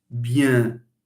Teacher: When you pronounce bien and you extend this for a long time, you will feel that the sound is both through your mouth, comes both through your mouth and through your nose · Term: nasalization